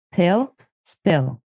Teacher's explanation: the p is a bilabial consonant that is you use both lips and close them